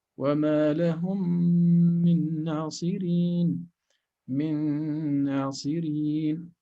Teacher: Okay, so we have a sukun followed by a meme with a vowel and a shadda. So we're going to apply here the Idgham Shafawi as if we are reading one single meme with shadda times 2.